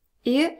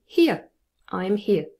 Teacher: there's movement from e to uh and we're gonna just link them together e and there we go this is our vowel sound ear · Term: diphthong ear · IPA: /ɪə/